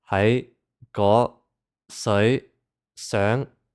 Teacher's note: because it's a rising tone, the high pitch is at the end of the word. So it's going to come after the vowel, but before the final consonant.